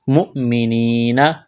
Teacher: یا مدہ ہے، الف کے برابر کھینچنا ہے